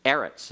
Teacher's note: Eretz is a seg late noun and accent on the next last syllable